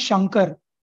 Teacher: between sh and ka there is ng sound